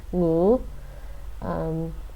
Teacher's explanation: Ng. And it sounds like a rising tone. Actually, it sounds like the third tone for Mandarin.